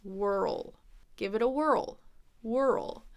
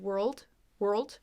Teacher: like two syllables we roll whirl give it a whirl whirl so it's a little more dragged out than world world where it just kind of is all smushed in one sound